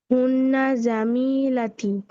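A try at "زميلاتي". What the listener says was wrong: আমি টান হবে প্লুরাল তো। জামিলাতি।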